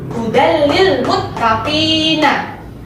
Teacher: Ada tanwin bertemu dengan salah satu huruf idgham bilang guna, yaitu lam. Maka dibaca satu ketukan dan termasuk hukum bacaan idgham bilang guna.